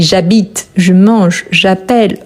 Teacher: Attention ne prononce jamais les e à la fin du verbe quand je ici j'habite je mange, j'appelle on ne prononce pas les e on prononce la dernière consonne